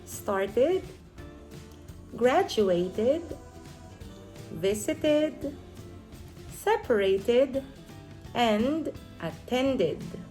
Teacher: we pronounce the ed as an extra syllable